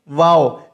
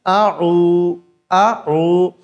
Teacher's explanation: वाव का मखर है दोनों होठों की गोलाई को बना कर के वाव अदा हो जाता है